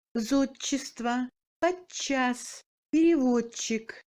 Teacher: La combinaison D-Ч se prononce comme Ч long